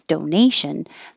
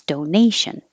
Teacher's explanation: the shun makes the syllable before stressed